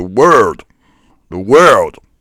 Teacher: They're rolling their R's.